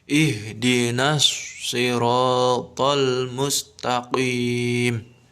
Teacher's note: Nah, di sini harus dimasukkan ke dalam langsung kepada huruf shad. Jadi lamnya itu seolah-olah hilang, langsung ditasydid ke huruf shad. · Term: idgham syamsiah